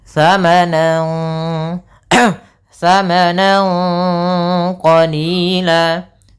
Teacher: samarkan suara nunnya, angnya, nannya itu ke huruf qaf, jadi terdengar seperti ang. Samanan samanan qalila, sambil ditahan dengan gunnah 2 harakat. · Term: ikhfa